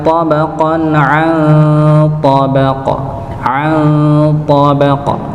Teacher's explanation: Nun sukun ketemu dengan huruf th. Maka disamarkan ditahan dengan samar.